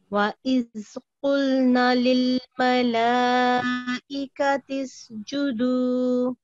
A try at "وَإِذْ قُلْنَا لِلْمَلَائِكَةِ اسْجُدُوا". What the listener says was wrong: جزاک اللہ, یہاں پہ صرف آپ نے اس کو الف کو تھوڑا کم ٹائم دیا ہے, باقی ماشاءاللہ آپ نے ٹھیک پڑھا ہے جی, اگلی لائن پڑھیں,